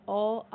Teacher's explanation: अगर आप अ आ बोलोगे तो कंठ से आवाज आती है।